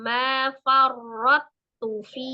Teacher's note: langsung diidghamkan ke ta, kemudian tu-nya pendek. Jadi langsung ma farrattu fi, ya, enggak ada qalqalah ya.